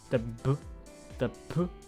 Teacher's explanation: So for anyone wondering what that means, think of how you pronounce the letter B in English and the letter P in English. They both are pronounced at your lips.